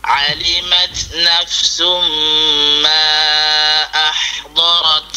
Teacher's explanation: huruf ha itu bagi keluar angin yang licin, eh. Jangan bagi sangkut.